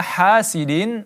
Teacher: ha dibaca 2 harakat karena dia mad tabi'i. Kemudian sidin idza, ya tanwin bertemu huruf hamzah maka kita izharkan, kita jelaskan bunyinya dan tidak ada dengung.